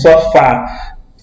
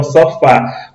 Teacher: quando pronunciamos a última sílaba, Fá, ela sai com um som mais forte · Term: vogal tônica